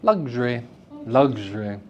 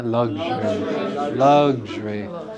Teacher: luxury a three syllable word can have its middle syllable removed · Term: elision